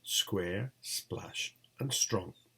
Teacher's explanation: The only three-member onset clusters begin with a voiceless alveolar fricative s, which is considered a pre-initial consonant within the cluster.